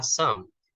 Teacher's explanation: Ketika kamu mengucapkannya itu harus dari intonasi yang tinggi kemudian turun hingga menaik lagi loh. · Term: fall rise pitch